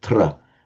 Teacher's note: this tra ending, where Pali retains the consonant cluster of Sanskrit